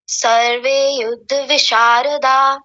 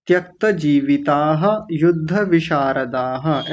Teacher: सबसे पहली कमी तो यह है आपने विसर्ग छोड़ दिए थे यहां पर ये दोनों त्यक्त जीविता युद्ध विषारदाह ऐसा बोलेंगे बोलिए